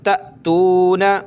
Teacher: یہاں حمزہ ساکنہ ہے, جھٹکا دیں گے